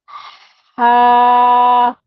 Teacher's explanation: ये दरमियान, जो हमारी गर्दन का मिडिल पार्ट होता है वहां से अदा होता है।